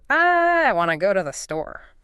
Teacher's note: Everything else is sacrificed to maintain that rhythm. So the prepositions to and the article the get flattened. The auxiliary want to blends together. · the first two isn't pronounced with a clear oo sound. It collapses into the ubiquitous, indistinct schwa sound. The schwa. Okay, let's talk about that for a second.